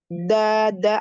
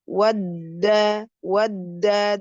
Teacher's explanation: ujung lidah menyentuh belakang eh pangkal gigi seri ya. Dua gigi seri bagian atas. Da da agak cadel ya.